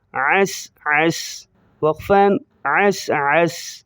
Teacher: سین کی زبر کو ظاہر نہیں کریں گے